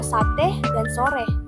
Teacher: bunyi depan sedang tak bulat